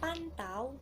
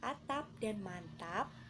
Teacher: pelafalan fonem P itu tidak lepas dan biasanya terletak di akhir suku kata